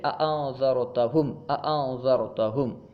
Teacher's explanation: حمزہ کو اس کے مخرج سے خوب ظاہر کر کے پڑھنا تحقیق کہلاتا ہے